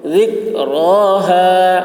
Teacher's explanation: ذال کی آواز باریک ہوگی، را پر ہوگی، ذکراها.